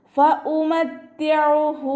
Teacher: ഐനിൻ്റെ മഖ്റജ് ശ്രദ്ധിക്കുക കേട്ടോ. വസത്തുൽ ഹൽക്ക് തൊണ്ടയുടെ മധ്യഭാഗം സൗണ്ട് ഹംസയുടെ സൗണ്ടായി പോവാതെ ശ്രദ്ധിക്കുക. ഫഉമത്തിഉഹു എന്നായി പോവരുത്.